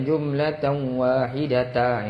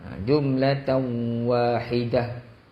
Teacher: Ta gulung ni bila berhenti dia bunyi ha. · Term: ta marbutah